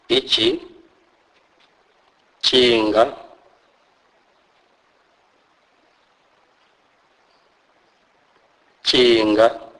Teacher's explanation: this is pronounced as in the English word chick although the Zulu sound is more ejective